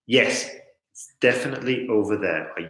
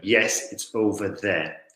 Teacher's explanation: if we go down at the end of the sentence then we are conveying certainty